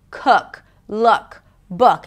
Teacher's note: So the jaw drops a bit, the tongue is a little lower, the lips round just a bit. Imagine like you have a hot potato inside your mouth.